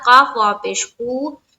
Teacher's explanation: یہاں پر وا مدہ کا قاعدہ ہے، ایک الف کی مقدار کے باقدر کھینچنا ہے، میم کے اوپر جزم لا کر وقف کرنا ہے.